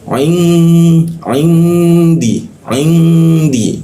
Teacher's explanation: ini didengungkan nun matinya didengungkan